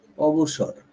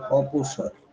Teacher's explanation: এই বটা এখানে পয়ে পরিণত হয়েছে। বটা ছিল ঘোষ, পটা হলো অঘোষ, সুতরাং ঘোষ থেকে অঘোষে পরিণত হয়েছে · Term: অঘোষী ভবন